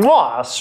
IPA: kǃoas